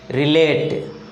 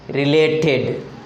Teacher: Though the suffix is added, the stress doesn't change.